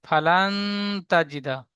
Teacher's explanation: ইজরা, নুন সাকিনের পরে হরুফে ইকফার 15টি অক্ষরের মধ্যে তা এসেছে, তাই নুন সাকিনের আওয়াজকে নাকে তুলে এক আলি পরিমাণ গুণনা করে পড়তে হবে, একে ইকফা বলে।